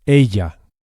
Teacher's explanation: The Spanish double L is pronounced very similarly to an English Y with just a hint of J.